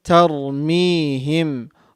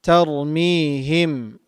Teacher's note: Ra is heavy because there is a fatha before ra sakin. And the fatha leads to heaviness, as we have mentioned so many times before.